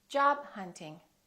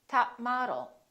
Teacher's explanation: Remember, hold it, don't release the final stop.